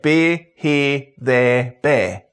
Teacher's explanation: The NEAR and SQUARE diphthongs become monophthongs, so we get beer, here, there, bare.